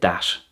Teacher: another feature of hiberno English is the lack of a th sound